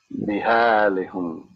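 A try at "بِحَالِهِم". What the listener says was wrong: No, that's on the kasra's on the lam. Bihalihim. But it would go on the ha too, just because of pronunciation purposes. But the kasra's on the lam. Bihalihim.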